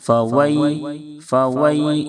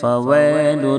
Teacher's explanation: یائلین کو نرم آواز کے ساتھ معروف ادا کریں. فوئی، فوئی، اس طرح سے آواز نیچے کی طرف جائے گی.